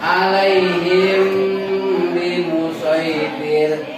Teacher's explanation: Jadi mimnya dibaca agak panjang dan keluarnya dari lubang hidung yang termasuk hidung itu namanya oesum, lubang hidung. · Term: Ikhfa safawi